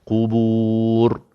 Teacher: Ra sifatnya bukan qalqalah, dia takrir, bergetar.